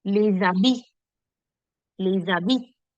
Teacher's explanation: When you remove the H from there, you create a link from the last consonant that is there in the word to the next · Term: sound bridge